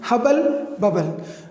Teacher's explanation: Sometimes double B also comes like in hubble, bubble, hubble and bubble. But this double B doesn't pronounce two sounds. It is pronounced as only single sound.